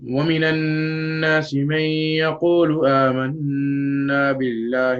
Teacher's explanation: So notice how there's a noon shadda, like how shown right here in the picture. And unlike the Ikhfa, I make the noon sound completely noticeable. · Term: ghunna